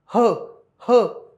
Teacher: ह या वर्णाचा उच्चार करताना फुफ्फुसातील हवा तोंडावाटे जोराने बाहेर फेकली जाते. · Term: महाप्राण